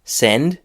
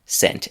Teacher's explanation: you could probably hear that the D at the end of send changed into a T.